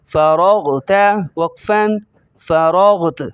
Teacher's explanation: را کو موٹا کریں گے، غین کو موٹا کریں گے